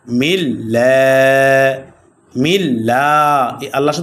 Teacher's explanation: আল্লাহ শব্দ লামের পূর্বে জের আসলে আল্লাহ শব্দ লামকে বারিক অর্থাৎ পাতলা করে পড়তে হয়